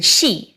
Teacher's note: a higher pitched version of English's sh, where the tongue is right next to the roof of the mouth. That gave us sh as in she.